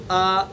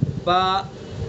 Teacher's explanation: ایک الف کی جو مقدار ہے وہ دو زبر کی آواز کا مجموعہ ہوتا ہے